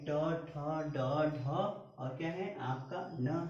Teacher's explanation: इसका उच्चारण होता है मूर्धा से और इसको हम लोग बोलते हैं मूर्धन्य वर्ण।